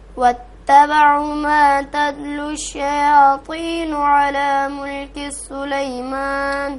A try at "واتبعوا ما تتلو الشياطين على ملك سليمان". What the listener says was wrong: واو کو نہیں کھینچیں، تبعو پیش کے بعد واو ہے تو اس کو کھینچیں، دو زبر کے برابر، دو پیش کے برابر کھینچیں گے.